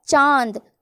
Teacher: अनुनासिक। इसका उच्चारण नाक और गले दोनों से होता है